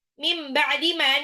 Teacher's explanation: nun sukun ketemu ba, iklab. Nunnya berubah jadi mim kalau ketemu ba. Dan ditahan.